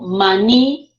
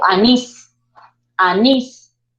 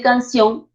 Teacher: fuerza de voz en la última sílaba y esa palabra termina en N, S o vocal, le colocamos tilde, porque nos indica que es una palabra aguda con tilde, es una palabra oxítona, ¿ya?